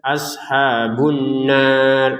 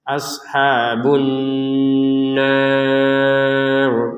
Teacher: Jangan sekedar ashabun nar itu kan belum dengung 100%. Jadi dengungannya itu harus 100%, yaitu 2 harokat ya.